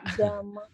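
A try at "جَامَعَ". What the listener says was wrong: Ja-nya panjang. Jama'a.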